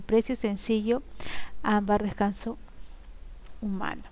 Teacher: tienen la fuerza de voz o el acento en la penúltima sílaba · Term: graves llanas